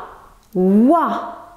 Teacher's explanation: Il correspond du point de vue articulatoire à la voyelle ou. Il se dit en arrière de la bouche, au niveau du palais mou, au fond.